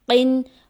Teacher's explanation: قوف موٹے حرفوں میں سے ہے، اس کو پر پڑھا جائے گا